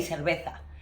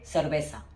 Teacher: in the rest of the Spanish-speaking countries, the sound of C, S, and Z is exactly the same